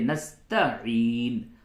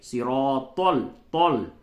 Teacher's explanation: یہ طا کو موٹا کر کے یعنی منہ بھر کر کے آواز نکلے گی تو اس کو کہتے ہیں پڑ کرنا. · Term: پڑ کر کے